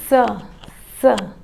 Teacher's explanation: इसका उच्चारण करते समय जिह्वा दांत को स्पर्श करती है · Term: दंत स